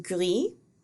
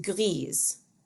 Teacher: well i take that back they're not pronounced the same way the masculine form is pronounced gri with a silent s and the feminine form is pronounced griez with a pronounced s and the plural is gri and griez as well